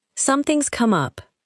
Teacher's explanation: Notice that something has becomes something's.